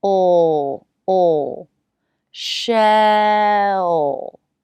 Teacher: Shell. The back of the tongue presses back to get this sound. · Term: dark L